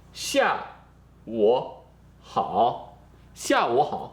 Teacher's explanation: here you have a third tone and a third tone together, but it doesn't have this exception like it does with 你 好, because 下 午, this 午 is part of this 下, is one word here.